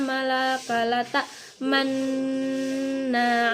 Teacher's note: mengkombinasikan harkat fathah dengan harkat domah disertai monyong bibirnya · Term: ismam